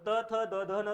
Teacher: आपण यांचा उच्चार करत असताना दातांना स्पर्श करतो, अशी जीभ पुढे जाणार, दातांना स्पर्श करणार आणि मागे येणार, म्हणून याला काय म्हणायचं, तुम्ही दंत्य वर्ण असं म्हणतात.